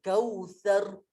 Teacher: Kalau ini kautsar, bergetar lidah kita.